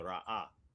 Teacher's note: Like you say, like when you have the resh, aleph, hey, there's a glottal stop there, right? So the aleph represents a glottal stop, and then the ha is vocalized